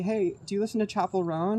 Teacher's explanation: the pitch goes up at the end